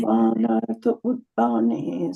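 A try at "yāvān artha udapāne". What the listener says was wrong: Not ud. It is uda. I have to get this right. It is Sanskrit. It is not Hindi.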